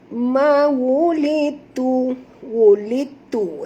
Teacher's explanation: Dal tak berbunyi sahabat semua, kita idghamkan dia. Yang berbunyi ialah lam ini terus pergi kepada ta. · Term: idgham mutajanisain